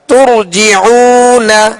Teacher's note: را ساکن سے پہلے پیش ہے لہذا را کو پر یعنی موٹا پڑھیں گے.